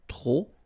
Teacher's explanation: don't pronounce the final P